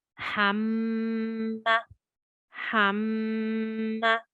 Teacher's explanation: So you can hear that I'm emphasizing the Mim Mushaddad because it's Ghunna, and that I've kept my emphasis on that Mim Mushaddad, and I have recited it for 2 counts, and yet the vowel sound, the stroke sound is short because it's not a long vowel sound.